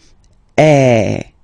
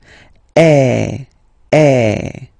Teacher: the sound is really open, and normally your mouth should be opened a little bit more than with the accent aigu as well. Okay, so it goes like eh.